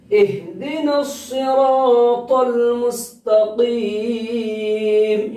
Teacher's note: چھوٹی ہا ہے، اسی وجہ سے سینے کی طرف سے نکالنا